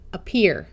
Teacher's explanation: SH says sh, sheer, smear, spear, sear. This A is going to schwa and sound like a short U